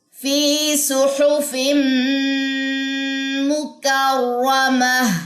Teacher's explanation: فی یہاں پہ یا مدہ ہے, 2 سیکنڈ آپ اس کو لمبا کریں گے.